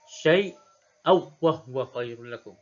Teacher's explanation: Memasukkan huruf tanwin tersebut dalam wa. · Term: Idgham bila gunnah